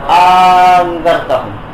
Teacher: দ্বিতীয় হামজাটা আলিফ হয়ে গেছে, এক আলিফ টান হয়ে হবে এটা। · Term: ইবদালি সানিয়াতি আলিফান